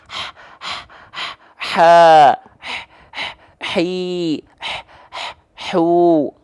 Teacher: karakteristik nafas yang mengalir akan berbisik atau seperti orang kepedesan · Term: ha kecil